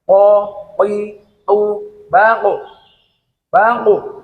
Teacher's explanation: Q yaitu Q cara mengeluarkannya qf yaitu pangkal lidah pangkal ya pangkal lidah mengenai langit-langit yang di atasnya · qof itu apabila dimatikan pada akhir kalimat dia juga harus dipantulkan dikolkolakkan karena qof itu sendiri juga mempunyai sifat qolqalah dia apabila mati